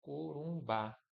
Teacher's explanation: a sílaba forte é ba e é terminada em A. Então o acento vai aqui, ó. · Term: oxítono